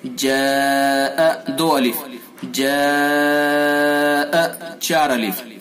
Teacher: جاء مد متصل یعنی حرف مد کے بعد حمزہ اسی لفظ میں ہے تو اس کے اندر مد متصل ہوگا۔ اس کو ہم 2 سے 4 تک کھینچ سکتے ہیں، یعنی 2 الف سے 4 الف تک اس مد کو کھینچا جا سکتا ہے۔